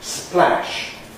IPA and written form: splæʃ (splash)